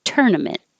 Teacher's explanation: As long as you have stress on the first syllable, it's going to sound fine.